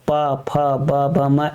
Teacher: प फ ब म इसमें दोनों होंठ क्या होते हैं? आपस में टच करते हैं। तो इसको ओष्ठ ध्वनियां कह देते हैं।